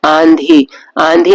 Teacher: चंद्र बिंदी लगी है तो इसे हम अनुनासिक स्वर कहेंगे आंधी आंधी में आ का उच्चारण नाक से होता है इसलिए यह भी एक अनुनासिक स्वर है